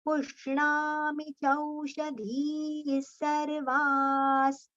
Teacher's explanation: Dhis, dhi we have to prolong, sarva we have to prolong, and then we have to take the visarga sound, partial sa.